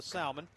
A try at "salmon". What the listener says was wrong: Did you say salmon? It's incorrect. It's salmon. the L is silent. We're going to say it right. Say it right. It's salmon.